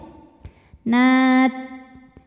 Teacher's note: di ta ini ada sifat syiddahnya, suaranya kuat ya. Nat. Kemudian dipermudah, di belakangnya ada hams, keluar angin.